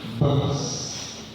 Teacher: It's voiceless. So when you add S to a voiceless environment, it will remain S.